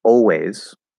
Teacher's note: instead of an l colored ah it's an l colored o